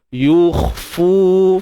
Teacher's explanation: Yukhfuna fi. Yukhfu, untuk huruf kha kita matikan dia, dan jangan lupa untuk tebalkan. Macam mana nak tebal? Angkat pangkal lidah. Yukhfu, fu mak asli.